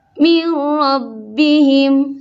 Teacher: langsung ke ro, tidak ada nun sama sekali, tidak ada dengung sama sekali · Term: idgham kamil